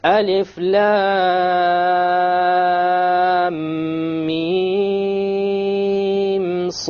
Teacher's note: So there's a ghunna between the lam and the mim, and there's no ghunna between the mim and the sad.